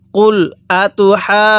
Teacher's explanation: এই হা এর মধ্যে আমরা আগে চার আলিফ টান দিয়ে দিব চার আলিফ টান দেওয়ার শেষে আমরা হাকে জিমের সাথে লাগিয়ে মিলিয়ে